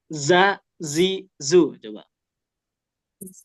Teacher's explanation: kalau zai ini dia enggak boleh digigit ya lidahnya harus jelas desis-nya